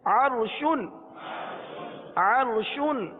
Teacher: अब यहाँ देखिए, अर्शुन रा साकिन है, उससे पहले आइन पर कौन सी हरकत है, जबर। जी हाँ, रा साकिन से पहले जबर है, इसलिए रा को पुर पढ़ेंगे